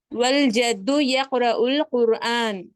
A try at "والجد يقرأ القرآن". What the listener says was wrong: نعم ممتاز.